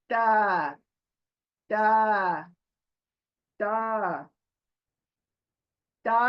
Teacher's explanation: हमारी जुबान जो है ना वह सामने के जो दांत है बड़े उनके जड़ों को टच करती है।